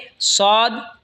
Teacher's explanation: সদ জিহ্বার আগা সামনের নিচের দুই দাঁতের আগার দিকে লাগা উচ্চারণ হবে সদ